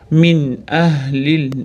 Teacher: Min ahlil nun sukunli aniq kelayotgani uchun izhor qoidasi bildirib o'qiymiz.